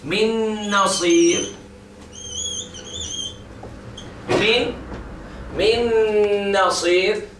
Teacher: The noon has been gone completely by the next noon.